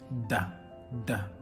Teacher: You'll notice that is da, with the tongue between the teeth.